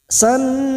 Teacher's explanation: bertemunya 2 huruf mim yang sama, yang pertama sukun, siap masuk pada huruf mim berikutnya dan ditahan selama 3 harokat, mendengung dan ditahan selama 3 harokat, idgham mimi.